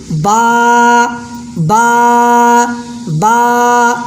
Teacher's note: तो बा कैसे बोलेंगे, बा बा, दोनों होंठ का तरी वाला हिस्सा मिलकर बा अदा होता है, दोनों होंठ का गीला वाला हिस्सा मिलकर बा निकलता है। बा का मखरज दोनों होंठ का भीगा वाला गीला वाला हिस्सा है, बंद होंठों से बा निकलता है।